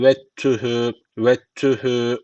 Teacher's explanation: Şu D hiç okunmuyor. Tü de şeddeli okunuyor. Yani V'yi direkt T'ye bağlıyoruz. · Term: İdgam mütecaniseyin